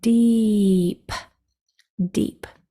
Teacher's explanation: very quick sounds but the E is sustained it's continuous so the sounds are e when you push those things together · the d and the p are both very quick sounds, but the e is sustained, it's continuous.